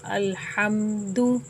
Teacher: مثلاً الحمد، الحمد میں میم کے بعد دال آ رہا ہے تو یہاں پر غنہ نہیں ہوگا بلکہ میم کو ہی ظاہر کر کے پڑھیں گے، الحمد۔ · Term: میم ساکن